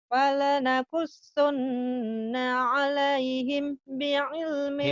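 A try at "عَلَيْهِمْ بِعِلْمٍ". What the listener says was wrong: mah ditahan karena ketemu ba ikhfa safawi. Alaihim bi ilmiu ditahan-ditahan nih. Alaihim bi ilmiu ditahan-tahan ya. Satu ikhfa itu mimati ketemu ba ikhfa safawi. Mim digombi gunnah ditahan dua-duanya ya. Nah, nanya ini tadi nggak ditahan. Ini ditahan. Bi'ilmi ini ditahan.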